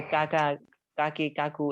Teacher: জিহ্বার গোড়া থেকে একটু আগে বাড়াইয়া তার বরাবর উপরের তালুর সঙ্গে লাগাইয়া কাফ